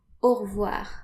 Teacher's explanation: French people often omit the E and just say au revoir.